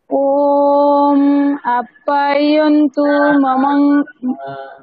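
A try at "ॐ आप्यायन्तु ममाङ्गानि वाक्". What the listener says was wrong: দীর্ঘগুলোকে টানুন।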